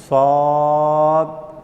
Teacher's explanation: زبان کی نوک اور اوپر نیچے کے دونوں دانت جب ملیں گے تو یہ صاد